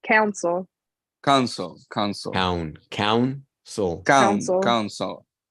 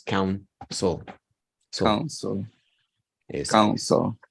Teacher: Como el acento está en la primera sílaba, entonces la segunda se reduce en proporción